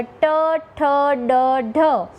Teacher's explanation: ગુજરાતી ભાષાની અંદર ટ, ઠ, ડ, ઢ આ 4 વ્યંજનનું ઉચ્ચારણ કરો છો ત્યારે જીભનો આગળનો ભાગ એ તાળવાના આગળના ભાગને સ્પર્શે છે અને જે વ્યંજનનું ઉચ્ચારણ થાય છે તેને મૂર્ધન્ય સ્પર્શ વ્યંજન કહેવામાં આવે છે.